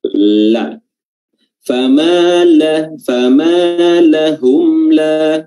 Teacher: ujung lidah atau punggung ujung lidah bertemu dengan langit-langit bagian atas